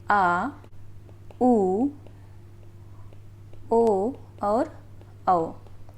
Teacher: पश्च स्वर में आता है आ, उ, ओ और औ